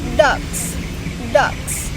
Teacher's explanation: The ending s becomes Z because the previous sounds G is voice. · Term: progressive assimilation